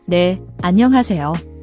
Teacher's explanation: when spoken clearly, it's an aspirated H sound, breathe out like fogging a mirror